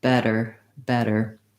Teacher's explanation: These words are all stressed on the first syllable, so the vowel and the first syllable is long